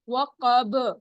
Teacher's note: قاف موٹا اونچا, با رکتے وقت کلکلا کریں گے کیونکہ یہ بھی کلکلا ورڈ میں سے ہے.